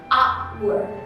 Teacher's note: meskipun dia penulisannya pakai h, cuman kan pengucapannya hour, diawali bunyi vowel yaitu a. Makanya kalau misalnya kita mau tambah kita nggak boleh hour gitu, nggak boleh, karena dia bacanya a, seharusnya an hour.